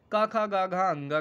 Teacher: क खा ग घ अंग का उच्चारण स्थान कहां से होता है कंठ से होता है